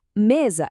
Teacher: Aqui a sílaba forte é a penúltima. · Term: paroxítonas